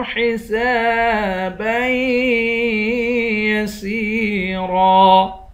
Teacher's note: حسابًا، با کو یا کے ساتھ ملا کر یہاں پر غنہ کریں گے